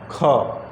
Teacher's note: जिसके उच्चारण में वाइब्रेशन नहीं है और हवा का खपत अधिक होता है, इसलिए नंबर 3 सही है। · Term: अघोष महाप्राण